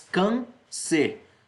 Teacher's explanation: Quando a gente faz a separação silábica, a gente fica com can e c, em que a sílaba tônica é o can, a sílaba inicial, a penúltima, o que faz dela uma paroxítona terminada em R.